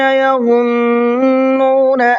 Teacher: یظنون ایک تو ظا ہے، اس کو منہ بھر کے پڑھیں گے، اور دوسرا نون کے اوپر تشدید ہے تو غنہ کریں گے۔